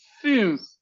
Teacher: Boca de U, cerradito chupito, y pronuncia una I. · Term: U con diéresis